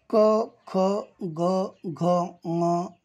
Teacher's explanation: या वर्णांच उच्चार स्थान कंठ आहे